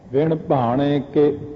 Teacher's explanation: ਕੱਕੇ ਦੀ ਸਿਹਾਰੀ ਬਹੁਤ ਸੂਖਮ ਆਵਾਜ਼ ਦਿੰਦੀ ਹੈ।